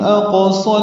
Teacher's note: اق میں قاف ساکن ہے تو قلقلہ